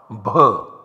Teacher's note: This bh is the mahaprana. It requires more breath. It is an aspirate sound, bh. The last amongst these class consonants is m.